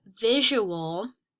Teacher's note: When you say visual, you can hear that U separately from the A in the word visual.